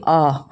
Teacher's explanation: विवृत में हमारा मुंह पूरा खुलता है